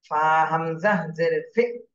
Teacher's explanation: হামজার উপরে জজম এজন্য একটু ধাক্কা দিতে হবে